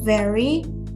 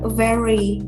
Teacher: they clearly pronounce the r with only a little bit of w sound